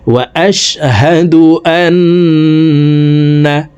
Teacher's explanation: তো এখানে দেখুন হরকতের বামে নুনের উপরে তাসদিদ আছে, এই কারণে জবরওয়ালা হামজাটি তাসদিদওয়ালা নুনের সাথে 3 সেকেন্ড পরিমাণ গুন্নাহ করে পড়ব